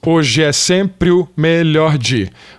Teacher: Juntou aqui o hoje é. Essas duas vogais que estavam juntas em sílabas separadas, a gente juntou na mesma sílaba.